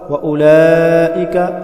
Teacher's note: مد متصل واجب 5 الف کے برابر کھینچ کر پڑھیں گے ، کاف کو باریک کر کے پڑھیں گے، ہم المفلحون وہ